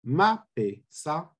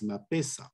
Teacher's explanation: You see that on ma, the pitch track falls, sa is totally devoiced, and you have a high tone that is downstepped for many reasons in this situation.